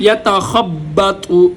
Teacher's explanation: یتا پہلا تا باریک، دوسرا تو موٹا